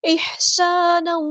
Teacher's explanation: ہا کو مستحرک middle throat سے ادا کرنا ہے، سین کی سٹی ہم نے واضح کرنی ہے